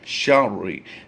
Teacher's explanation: याद रहे यहाँ पर हमने रा को 2 बार पढ़ना है। शीन रा ज़बर शर, रा से री, शर्रि।